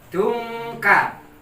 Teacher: N-nya ini dirubah pakai NG, didengungkan.